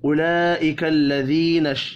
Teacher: لام بڑی مد کی وجہ سے 5 الف کے برابر کھینچ کر پڑھیں گے